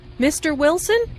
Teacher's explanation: Notice the rising intonation on <Mr. Wilson,> which is used to address someone.